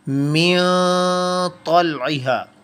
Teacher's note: हमारी ज़ुबान जो है हमारे मुंह के दरमियान में मुअल्लक रहेगी, वो टच नहीं करेगी। और आप ऐसा करके देखें तो इस दौरान में नून की जो आवाज़ है वो नाक में छुपती हुई हम उसको प्रोड्यूस करेंगे। इसको कहेंगे हम नून की आवाज़ को छुपाना।